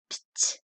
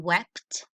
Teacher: Here we have PT, which says pt, as in wept. That P actually happens very fast.